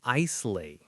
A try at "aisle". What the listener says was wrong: Ah, this is a trap. It is spelled Aisle, but the S is silent. No, it is pronounced aisle, like your I plus ul. Aisle.